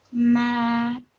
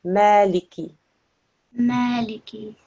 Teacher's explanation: it's a thin letter, so smile as you say ma